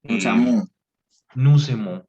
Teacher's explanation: Sin embargo, recuerda que así como hacemos en el español, que cuando una palabra termina en consonante y la siguiente viene en vocal, puedes hacer una conexión de esas dos palabras para que eh, suene como una sola